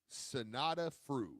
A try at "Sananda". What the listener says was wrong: I think it's Sananda. I think there's an N in there because I was saying Sonata too because I was thinking of the wrestler Steve.